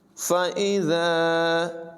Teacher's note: ذال میں سیٹی کی آواز پیدا نہیں کریں گے.